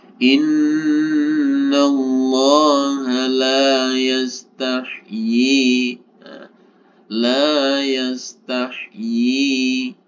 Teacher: ketika kita berhenti di sini maka y-nya cukup kita baca satu ayunan atau dua harkah · maka yi-nya cukup kita baca 1 ayunan atau 2 harokat. Baru ketika hamzahnya ini kita baca, kita ikutkan dalam pembacaan atau kita wasol, maka yi-nya ini yang kita panjangkan atau harus kita panjangkan sebanyak 4 harokat, 4 ketukan.